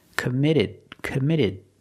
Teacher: The T in commit is between vowels. So it's a fast D.